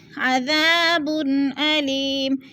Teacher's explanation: 2 پیش تنوین، آگے حروف حلقی میں سے حمزہ آ گیا ہے تو ادھر اظہار ہو رہا ہے، یعنی غنہ نہیں کریں گے